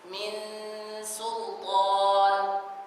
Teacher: Nun dengan sin huruf yang tarqiq, maka gunnah di sini jadi tarqiq.